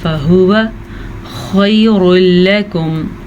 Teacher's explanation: را کو پر پڑھنا ہے. را کو پر پڑھتے لام کو پر پڑھنے کی غلطی مت کیجیے گا